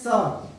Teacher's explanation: शुद्ध भाषा में उसको दंत सकार, क्योंकि उसका उच्चारण हमारा दांतों से होता है। जब उसको बोलते हैं स, तो उसका जो हमारा जीव जो है वो हल्का सा दांतों को स्पर्श करता है, स।